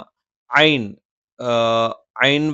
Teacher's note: ഐൻ വരുന്നത് തൊണ്ടയുടെ മധ്യഭാഗത്തു നിന്നാണ്.